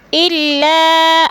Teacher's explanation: الا، ای میں مد منفصل ہے، حروف مدہ کے بعد حمزہ دوسرے کلمے میں آ گیا ہے تو ادھر مد منفصل 4 الفی مد ہے، اس کو 4 حرکات کے برابر ہم نے لمبا کر کے پڑھنا ہے